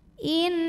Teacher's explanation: Lam pada lafaz Allah atau lam jalalah dibunyikan secara tafkhim sebab huruf sebelumnya berbaris fathah. Maka cara bacanya ditebalkan.